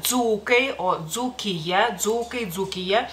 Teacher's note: en este caso son consonantes compuestas sonoras